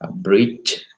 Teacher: bunyi yang tertahan penuh Tetapi setelah tertahan itu kemudian dilepaskan sedikit demi sedikit atau perlahan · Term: africative